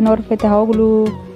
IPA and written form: nuɾ ˈfettahoːɫu (Nur Fettahoğlu)